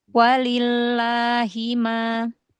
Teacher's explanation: Walillah, wa di depan coba ditipiskan